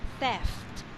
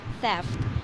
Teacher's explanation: you squeeze the F sound between the th and T theft the F is being squeezed between the th and the T sound